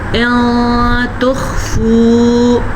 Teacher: نون ساکن یا تنوین کے بعد حروف اخفا 15 حروف میں سے کوئی حرف آ جائے تو ہم نون کی آواز کو یا تنوین کی آواز کو چھپا کے پڑھتے ہیں لیکن غنّے کے ساتھ پڑھتے ہیں